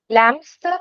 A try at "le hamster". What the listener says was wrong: No, because that H is aspirated. Le hamster.